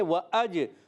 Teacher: جیم حرف قلقلہ میں سے قلقلہ کریں گے، جی آواز لوٹ کر آئے گی۔